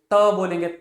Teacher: उच्चारण करते समय जीवा दांत से स्पर्श करेगी, उसको दंत व्यंजन कहा जाता है